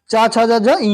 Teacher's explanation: जीभ तालु से स्पर्श करती है जिन वर्णों के उच्चारण में, उसका उच्चारण स्थान तालु या तालब होता है।